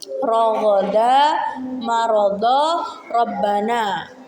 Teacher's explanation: huruf ro tafkhim tebal. Pertama, huruf ro yang berharokat fathah.